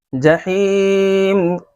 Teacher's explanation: یا ساکن سے پہلے دیکھیے زیر ہے اس لیے یا مدہ ہو رہا ہے، اس کو کھینچ کر پڑھیں گے